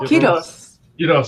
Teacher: if you say it fast enough, it sounds like you're trilling the R